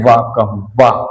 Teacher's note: हमारे जो ऊपर के दांत होते हैं नीचे वाले होठ पे बिल्कुल चिपक जाते हैं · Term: दंतोष्